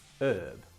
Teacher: In Britain we say herb, and in America they drop the H and they say herb